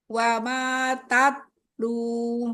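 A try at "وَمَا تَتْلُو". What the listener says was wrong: Belum ada hamesnya. Monyongin wau. Wama tatlu. Hamesnya mana?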